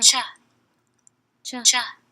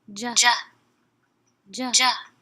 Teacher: Affricates, they're differentiated by voicing.